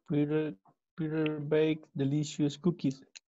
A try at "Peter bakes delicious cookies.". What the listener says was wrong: Okay, don't forget to pronounce the letter S, which is really important. Peter bakes.